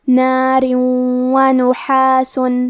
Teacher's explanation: کلمت نحاس میں حرف الحا ہے اور حا کی ادائیگی حلق کے درمیان والے حصے سے ہے · کلمت نارن کے آخری میں را کے نیچے تنوین زیر ہے، پھر حرف الواو آتا ہے کلمت ونحاس، واو حروف الادغام بغنہ میں سے ہے تو ہم یہ حکم کو غنہ اور تشدید کے ساتھ ادا کریں گے